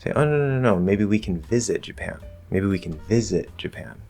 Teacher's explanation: I'm shifting the focus word to visit to clarify that it's visit, not something else. And then I'm giving a little more force and focus on top of that to the stressed syllable, and it just works the way it normally does. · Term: regular emphasis